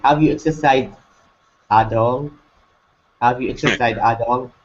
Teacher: It's going to be rising. This is a yes or no question.